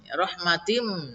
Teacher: Ya, maka tanwinnya dimasukkan. Ditahan dua ketukan supaya berdengung. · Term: idgham bigunnah